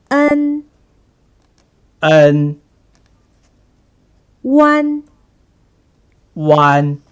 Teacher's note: The sound N is a tip tongue nasal final. When you pronounce it, you should first pronounce the sound, and then you should touch the tip of your tongue to the gums.